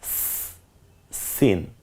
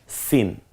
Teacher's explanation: সিনটা স্বাভাবিক একটু সি আওয়াজে উচ্চারিত হয় যেমন সাইকেলের পাম্প ছেড়ে দিলে যেমন একটা আওয়াজ হয়